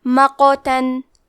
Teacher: کلمت مقتن میں قاف پہ جزم ہے، یہاں قاف کا حکم ہے قلقلہ. قلقلہ کا معنی ہے حرف ساکن کو ہلانا تو ہم حرف القاف کو ہلاتے ہوئے یہ کلمہ کو پڑھیں گے